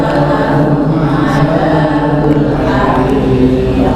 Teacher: Walahum, sama juga ada mim sukun ketemu ain, maka dibaca idhar jelas. Adzabul hariq, hariq, ya, maka dipanjangkan haririnya, dibaca tipis karena dia kasroh ra-nya, ya, huruf ra-nya tipis.